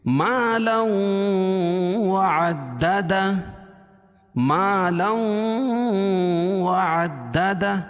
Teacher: مالا وعدد، ما الف سے پہلے زبر ہے، الف مدہ، اور تنوین کے بعد ادغام مع الغنہ کے 4 حرفوں میں سے واو ہے، تو یہاں ادغام یعنی غنہ کر کے پڑھیں گے